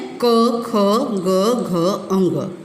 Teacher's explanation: ये कंठ के पास से बोला जाता है। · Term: क वर्ग